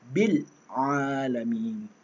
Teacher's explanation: bil, dia tak habiskan, matikan huruf lam tu